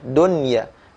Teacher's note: ketika mengucapkan kata ad-dunya, maka tidak boleh ada dengung. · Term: izhar mutlak